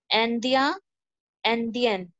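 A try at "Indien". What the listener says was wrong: Okay, this is Andia. Andia. तो Andia, ठीक है? Andia. This is Andia, okay. Andia. Indian बोलते हैं ना Indian क्योंकि IN Indian हो जाता है. In, लेकिन हमें आ बोलना है आ ओके आंदिया आंदिया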